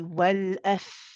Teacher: You see how I'm staying longer on the fa than I am on the lam.